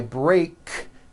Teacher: break ends with an unvoiced K sound there's no voicing on that K